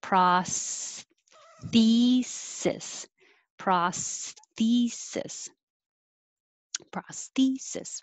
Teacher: This has a lot of movement from behind the teeth for the S and between the teeth for the TH and back behind the teeth for the S.